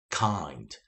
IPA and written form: kaɪnd (kind)